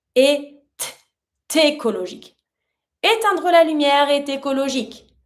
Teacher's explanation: So if you want to sound a little smoother, just try to pronounce the same way, but you're going to pronounce your E plus your T with the following word